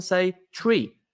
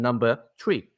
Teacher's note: People in Ireland very often say tree for both the thing in the wood and number tree